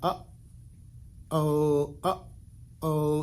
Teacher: throat here where you're kind of up oh up oh is where you're kind of pinching the sound off in your throat and then opening back up again to make another sound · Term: glottal stop